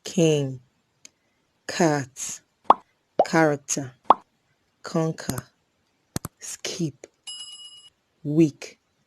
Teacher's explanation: Next we have the Velar Plosives, k and g. K is a voiceless velar plosive